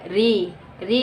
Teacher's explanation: देखिए उसी पे बल पड़ता है री। आप बोल करके देखिए, तालु के ऊपर वाले भाग पे बल पड़ता है। कंठ तालव्य ध्वनि देखिए कौन कौन सी है। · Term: मूर्धन्य ध्वनि